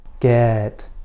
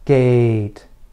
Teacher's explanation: front of your mouth but there are important differences between them your lips should be slightly farther apart for the e sound and your tongue should be slightly higher for the a sound